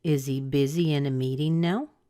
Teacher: you may hear just a little bit more stress on the word busy · They both have some stress, but I'm giving busy just a little bit more because that's where my focus is.